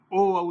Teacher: ओ औ दोनों कंठ ओष्ठ के संयोग से हैं।